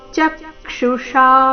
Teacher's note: ಚ ಮೇಲೆ ಆಘಾತ ಕೊನೆಗೆ ಷ ದೀರ್ಘ ಮೂರ್ಧನ್ಯ ಷ ಇದೆ